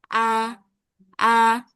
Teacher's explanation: Nah, hamzah yang fathah itu enggak boleh dibaca a gitu. Jadi, jangan mengap a tapi a a ya agak disenyumin sedikit